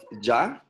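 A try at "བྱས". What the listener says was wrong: Yeah, but with the S on, Sa on the end.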